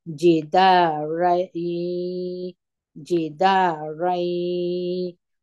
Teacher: اوس نو پر را باندې دوه زورونه دي، دغه یو زور دی یو نون دی، نون په دغه یا کې مدغم سوی دی، دلته ادغام د نون ساکن د غونې سره دی